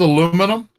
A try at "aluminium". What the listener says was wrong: It's aluminium. It's got an eye in there.